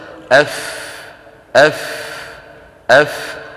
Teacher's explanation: أطراف الثنيتين العليين على بطن الشفة السفلى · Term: الفاء